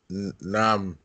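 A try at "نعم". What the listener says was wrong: Yes, nam.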